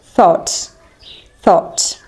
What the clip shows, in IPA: θɔːt